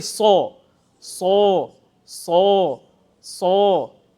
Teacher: The back of tongue goes up and you feel the echo, the sound comes out with heaviness.